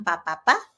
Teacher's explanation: ang pa ay bilabial, meaning ang sound na ito nagagawa sa pagdikit ng ating dalawang labi